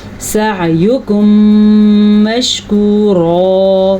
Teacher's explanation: عین کے تلفظ کا خاص خیال رکھنا ہے، اور یہ جو ہے ہمارے پاس اس قاعدے کا نام بھی سیکھیں اور اس قاعدے کو آج غور سے سیکھیں. میم ساکن کے بعد اگر میم متحرک آ جائے تو وہاں پہ ایک قاعدہ ہوتا ہے جس کا نام ہے ادغام شفوی. اس قاعدے کو غنے کے ساتھ ادا کرتے ہیں